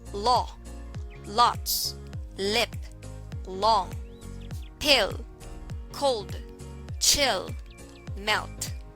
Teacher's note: formed by lightly pressing the tip of the tongue against the roof of the mouth while air passes through at the same time the vocal cords are engaged to create